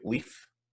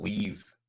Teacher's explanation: we've got leaf, which is a short, then we've got leave, which is longer